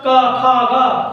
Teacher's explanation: का खा गा ये हमारा कंठ से हो रहा